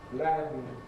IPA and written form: lænd (land)